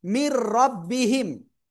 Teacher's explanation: র আসছে নুন সাকিনের পরে। এজন্য আমরা কি করব, গুন্না ছাড়া মিলিয়ে পড়ব।